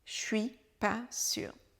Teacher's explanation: On prononce à peine le je et le suis devient un che.